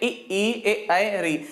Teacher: जिन स्वरों का उच्चारण करते समय जीभ के आगे का भाग क्रियाशील होता है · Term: अग्र स्वर